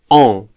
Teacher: I would say that this vowel sound is practically the O sound in a word like dor, but nasalized.